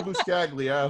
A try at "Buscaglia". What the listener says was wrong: It was close. Well, it's Buscaglia. The G is silent. Buscaglia.